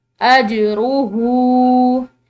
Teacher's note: ہا جو ہے یہ اس کے اوپر الٹی پیش ہے، تو اس ہا کو لمبا پڑھیں گے